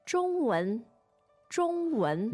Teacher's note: Now, the tones on 中文 are First and second.